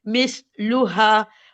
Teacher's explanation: हा पे फतह है और अलिफ सगीरा आ रहा है, तो ये 2 काउंट की मद बनेगी